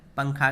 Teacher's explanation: نون کی آواز کو ناک میں چھپا کر پڑھیں گے، جس طرح اردو میں پنکھا کے نون کو پڑھتے ہیں۔ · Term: اخفاء